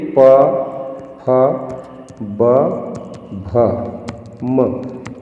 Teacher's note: ये ओष्ठ के द्वारा यानी होंठ की सहायता से हम इन ध्वनियों का उच्चारण करते हैं। ठीक है, या कहें इन अक्षरों को, इन वर्णों को पढ़ते हैं, उच्चारण करते हैं, तो इसलिए इसे ओष्ठ वर्ग में रखा गया।